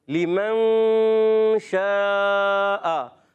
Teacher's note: غنہ کرنا ہے یہاں پر کیونکہ نون ساکن کے بعد شین حرف اخفا میں سے آ رہا ہے · شین کی ادائیگی ہوتی ہے زبان کے درمیان اور تالو کے درمیان سے, حرف تفشی بھی کہلاتا ہے شین, منہ میں آواز پھیلتی بھی ہے